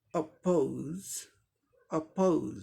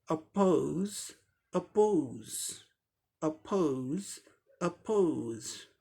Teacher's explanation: औ की जगह ओ साउंड हो जाएगा, बाकी सब सेम है। अपोज, अपोज, अपोज, अपोज, ओ औ, ये फर्क है ब्रिटिश में और अमेरिकन में।